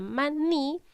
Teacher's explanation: en la palabra maní, la sílaba ma es la sílaba átona. Y en la sílaba ni sería la sílaba tónica. ¿Por qué? Porque es donde yo estoy cargando la voz.